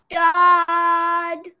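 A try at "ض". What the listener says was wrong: Now, this is sod. This is bod. And this is the one that we are doing now. Don't say d at the end. Don't say d. Without d, other the rest is right.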